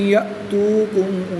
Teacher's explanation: حمزہ ساکنہ کو ہمیشہ جھٹکا دے کر پڑھتے ہیں